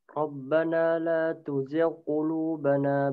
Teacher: Rabbana la tuzigh qulubana ba'da idh hadaitana wa hab lana. Ya, ghainnya dia tidak terlalu tebal atau disebut sebagai tafkhim nisbi